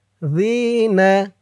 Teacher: জি একালিফ টান, জেরের পরে ইয়া সাকিন